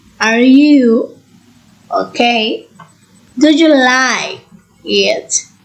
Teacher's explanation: the tone rises at the end to show that the speakers expect an affirmative or negative response · the voice rises at the end of the sentence